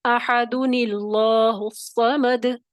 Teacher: اب حمزہ وصلی نہیں پڑھا جائے گا